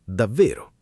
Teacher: Con il tono che scende è una conferma fredda.